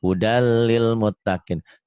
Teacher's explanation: idgham diidghamkan, dimasukkan, tanpa dengung. Tanpa dengung, iya. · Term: idgham bila guna